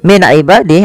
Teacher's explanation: ada nun sukun bertemu dengan Ain yaitu dibaca dengan jelas Suara nunnya karena dia ada bacaan izhar halqi izhar artinya jelas halqi berarti